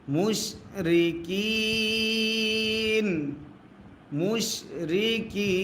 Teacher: নুন জবর না, জবরে দম যদি ফেলা হয় আর যে সাকিন ধরতে হয়। মাদ্দে আসর বামে আরজি সাকিন যদি হয় 3 আলিফ টানতে হয় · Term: মাদ্দে আরজি